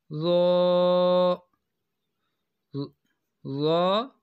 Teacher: ضا کی جو آواز ہے یہ موٹی اور نرم ہوتی ہے